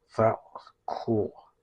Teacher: Buttthead has almost like a lisp and you put your tongue up